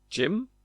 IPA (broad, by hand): dʒɪm